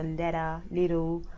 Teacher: The T's and the L's get dropped a little bit, and I'm used to that now. The T gets substituted for a D.